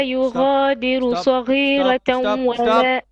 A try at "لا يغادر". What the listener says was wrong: لا يغادر. Ra will be flat here because of the kasra before it. You said لا يغادر with heavy. No.